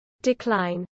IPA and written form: dɪˈklaɪn (decline)